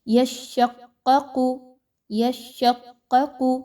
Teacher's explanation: دونوں قاف کو ایک جیسا موٹا کر کے پڑھیں گے